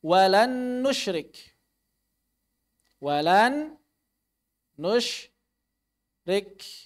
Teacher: Maka kita tidak membaca nun yang pertama. Ini nun yang diwalan, ini hilang. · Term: idgham kamil